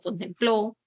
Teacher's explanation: van a presentar el acento en la última posición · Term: palabras agudas